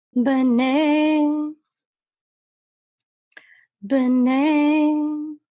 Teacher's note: this is a mercha, and so the accent is on ne, not b.